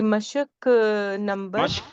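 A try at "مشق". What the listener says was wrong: मश्क पढ़ेंगे, मश्क नोट मशक।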